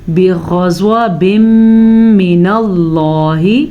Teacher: لفظ اللہ کو ہم نے پھر پر پڑھا کیونکہ لفظ اللہ سے پیچھے زبر ہے